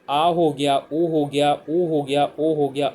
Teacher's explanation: इस बाद है पश्च स्वर, यानी जिनके बोलने में जीभ का पिछला वाला हिस्सा ज़्यादा एक्टिव होता है